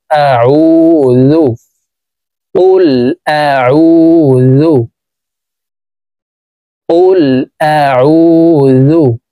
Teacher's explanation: আইনকে হলকের মধ্যখান থেকে চাপ দিয়ে উচ্চারণ করব